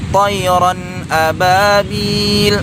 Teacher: tanwin berjumpa dengan huruf hamzah. Ini juga tidak boleh didengungkan. Hukum bacaannya adalah izhar ya.